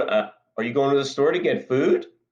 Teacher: by raising the pitch of my voice at the end of the sentence